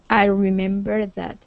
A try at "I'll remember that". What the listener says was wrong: Okay, one more time. Pronounce that L. I'll. I'll remember that.